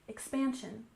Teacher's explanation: And expansion, we stress the second syllable, expansion, expansion.